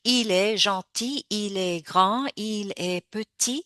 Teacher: Because usually, il est gentil, il est grand, il est petit. The T is usually not pronounced.